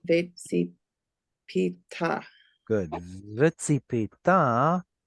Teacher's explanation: put the stress on the end because it's a vekatal.